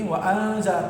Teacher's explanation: Di al-khaisumnya maka harus ada muncul dengungnya, hidungnya